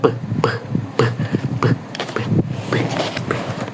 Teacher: Udara tertahan di belakang bibir. Bibir dibuka tiba-tiba, udara langsung meledak keluar. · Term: hambat bilabial tak bersuara